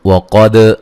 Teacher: वक़द क़ाफ़ को मोटा अदा करेंगे, दाल पे क़लक़ला करेंगे